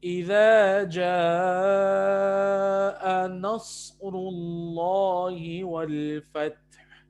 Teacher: را موٹا ہے، ٹھیک ہے، اور صاد موٹا ہے